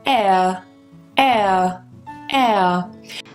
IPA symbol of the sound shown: eə